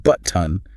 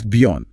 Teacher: Instead of pronouncing the T with your tongue, you just briefly stop the airflow in your glottis. You swallow the T.